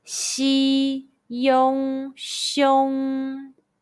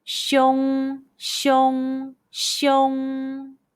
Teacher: combine the initial xi, the final yong, and the high-pitched first tone all together. Xi, yong, xiong.